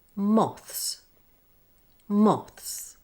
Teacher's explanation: partially block the air with your tongue by lightly touching the back of the top front teeth to enable the air to leak through then release the air fully for the S Sound by quickly